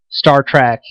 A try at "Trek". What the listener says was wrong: It's Trek, not track. Trek.